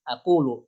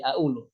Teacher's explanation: Qaf berubah jadi hamzah sebagaimana yang diucapkan oleh orang-orang Kairo di Mesir.